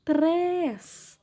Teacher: Sílaba mais forte é o três, som fechado, acento circunflexo.